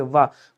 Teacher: ये कहां से बोला जा रहा है आपको कि सर ये आ और ई से मिलकर के बना है, यानी कि ये कंठ से और ये तालु से बोला जाता है, अर्थात कंठ तालव्य हो जाएगा। वाह का जब प्रोनाउंसिएशन करोगे तो ऊपर वाले दांत नीचे वाले होंठ से टकराएंगे और बोलोगे वाह, मतलब इसको दंतोष्ठ कहा जाएगा।